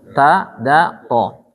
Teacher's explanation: Ujung lidah ketemu dengan pangkal gigi atas.